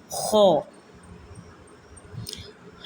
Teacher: حلق کا وہ جو منہ کی طرف سے ہے اس سے خو ادا ہوتی ہے